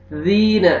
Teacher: ذال کو نرمی سے ادا کرنا ہے، زور سے نہیں پڑھنا، زا میں ساؤنڈ نہیں جانا چاہیے۔ ذین، یا مدہ 1 سیکنڈ یا 1 ایک الف کے برابر آپ نے کھینچنا ہے۔